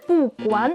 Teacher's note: He said 不管 with a second tone instead of 不管